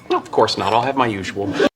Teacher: Preste atenção aqui na hora que ele fala of course not. Você não vai perceber o som do T. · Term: connected speech